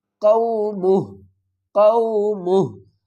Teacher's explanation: وقف کی صورت میں ہم کیا کریں گے؟ الٹا پیش کو ڈراپ کر دیں گے اور ہا کو ساکن پڑھیں گے